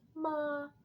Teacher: our first tone, ma, it is a high tone and it's very flat.